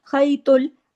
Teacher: त जो है हैवी लेटर है मोटा करके पढ़ना है मुंह भर के पढ़ना है